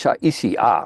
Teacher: So it's not shy, it's Shaisi, right. So the what normally would be a diphthong is actually the vowels are separated